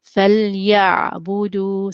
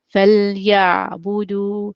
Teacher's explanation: the Lam and the Ain will both have greater timing than any other letter